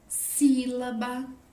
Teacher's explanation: Na palavra sílaba, Ba é a minha última sílaba, Lá, penúltima e Si é a mais forte e está acentuada. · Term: proparoxítonas